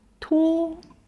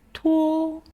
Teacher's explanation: The word 托 ends with o sound, which requires your mouth to round and end o.